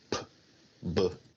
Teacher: Bilabial sounds are produced with both lips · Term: bilabiales